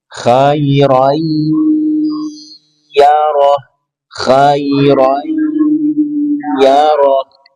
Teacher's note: Sini ada tanwin bertemu ya idgham bi gunnah. Tahan 2-3 harokat dan wajib dengung.